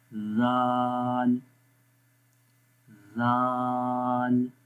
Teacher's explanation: जब ज़ुबान की नोक ऊपर वाले दांतों के किनारों पर लगेगी तो ऑटोमेटिकली सॉफ्ट साउंड पढ़ी जाती है।